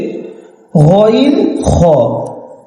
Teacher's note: 2 নম্বর মাখরাজ, হলকের মধ্যখান হইতে আইন হা। 3 নম্বর মাখরাজ, হলকের শেষ ভাগ হইতে